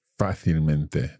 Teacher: But because fácil has an accent, then the adverb maintains the same pronunciation. Well, not the same pronunciation, but the stress is still on that A, on that first A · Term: sobre esdrújula